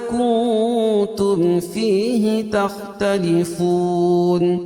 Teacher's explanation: کنتم میں اخفا حقیقی اور اس کے تم میں اظہار الشفوی